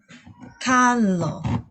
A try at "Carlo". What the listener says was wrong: No. Can you pronounce the R?